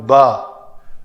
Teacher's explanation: تو با کے لیے تو ہونٹوں کا تر حصہ آپس میں ملا ہے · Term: حروف قمری